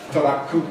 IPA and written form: toɾakkɯ (トラック)